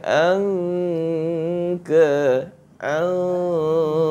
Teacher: Ikhfa tu apa? Menyembunyikan nun mati di sisi huruf kaf kan? Dia pergi ke belakang. Anka anka. Ha dia pergi ke belakang tu.